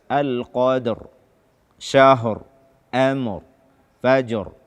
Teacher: Ketika kita waqaf pada seluruh ayat di dalam surat Al-Qadar ini, ra-nya dibaca dengan tebal, bukan tipis. Ya, dibaca dengan jelas. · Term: ra sukun karena waqaf